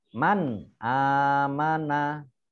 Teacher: nun sukun bertemu dengan Alif Alif dibaca jelas bacaan izhar